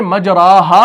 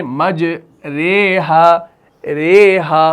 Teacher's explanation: असल में मजराहा पढ़ेंगे नहीं हम पढ़ेंगे मज रे हाहा रे हाहा तो उसको हम थोड़ा सा झुका रहे हैं। यानी हम फतहा को कसरा की तरफ झुका रहे हैं। तो हम यहां पर इमाला करते हैं।